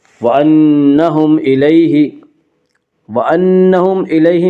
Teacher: اس کا قاعدہ یہ ہے کہ میم ساکن کے بعد میم اور با کے علاوہ کوئی اور حرف آئے تو وہاں پہ اظہار شفوی ہوگا، یعنی میم کو ظاہر کر کے پڑھیں گے